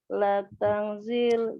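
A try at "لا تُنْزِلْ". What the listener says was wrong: La tungzil. Mengikuti fi'il mudhoreknya. Kalau fi'il mudhoreknya dhammah awalnya, maka fi'il nahinya juga sama.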